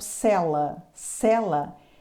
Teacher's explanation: cela é uma vogal oral com timbre aberto